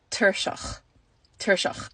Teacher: You just get shortened like one vowel sound from that. And then the CH gets a sound. That's your guttural sound at the back of your throat.